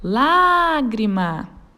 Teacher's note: força e proparoxítona é uma palavra que tenha antepenúltima sílaba tônica Ou seja a sua antepenúltima sílaba é aquela que é pronunciada com mais força · é a sílaba tônica a lágrima vamos chamar a palavra lágrima a sílaba tônica da palavra lágrima é o lá e ela está na antepenúltima sílaba da palavra